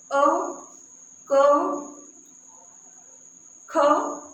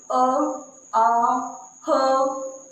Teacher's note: अ, क, ख, तो हमारे कहाँ से आवाज आ रही है? हमारे कंठ से आवाज आ रही है, ठीक है। दांतों से आवाज नहीं आ रही, ना ही हमारी जीभ हिल रही है ना।